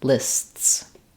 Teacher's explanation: T and then bursting back into the S position um so there's a little Interruption between the S sounds